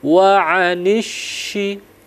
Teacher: Jadi huruf Sya itu harus deras anginnya